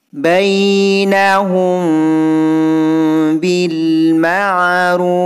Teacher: Kalau yang ini ikhfa syafawi. Bunyi hum ini didengungkan 2 harokah